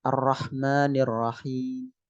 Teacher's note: Raum itu ketika kasrah dan dhammah nanti misalnya Ar-Rahmanir Rahim. Ada kata mi-nya kedengaran tapi pelan, hanya orang dekat saja.